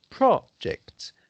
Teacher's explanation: when is the noun the emphasis is on the first syllable rather than on the second syllable can you see that difference projects in this case it's yeah